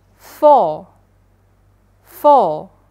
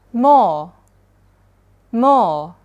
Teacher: Tapi bedanya di sini nggak ada bunyi tambahan. Tapi R-nya nanti hilang, tapi dibaca jadi O panjang aja gitu